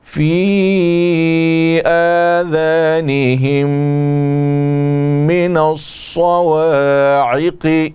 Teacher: آذانہم من الصواعق، کھڑی زبر الف کی طرح لمبا کر کے پڑھیں گے۔ آذانہم، میم ساکن اور اس کے بعد دوسرا میم ہے تو یہاں پر ادغام ہے، ادغام مع الغنہ ہے، یعنی نون مشدد ہو گیا، لہٰذا اس میں غنہ کے ساتھ اس کو پڑھیں گے۔